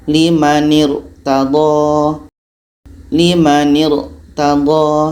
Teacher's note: Limanir, tebal. Pangkal lidah kita terangkat.